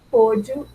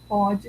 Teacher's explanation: Pôde com som fechado indica passado. Pode com som aberto indica o presente.